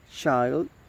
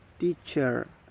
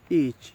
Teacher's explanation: Ch sound, and initial example is child, the middle example is teacher, and the final example is each, and the voicing is voiceless, and the place of articulation is post alveolar